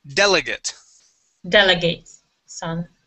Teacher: the stress is at the beginning of the word delegate delegate son okay delegate yeah yeah the ate at the end